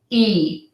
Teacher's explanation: So we smile when we say the sound. So I describe this sound as smiling. It's smiling lips, and your lips are tense. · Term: long E sound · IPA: /i, ɪ/